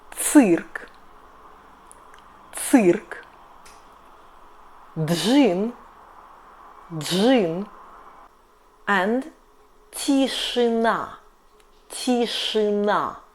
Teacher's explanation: Three consonants — Ж, Ш and Ц. So after this consonants we read И always like [ы].